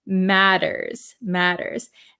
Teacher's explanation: have an American accent so this word it has T's here these T's are a flap T in American English so we say we it sounds like a D sound